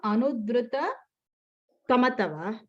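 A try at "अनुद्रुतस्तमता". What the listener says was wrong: Tamata. Okay, anudrutas is sound is there because there must have been a visarga there which becomes an is. So anudrutas tamata.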